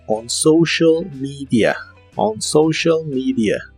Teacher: La O de social se pronuncia como OU y la E de media se pronuncia como I